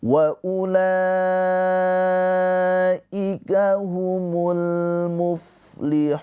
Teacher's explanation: Maka ini hukumnya adalah mad wajib muttasil. Panjangnya la ini dibaca panjang boleh empat atau lima harakat.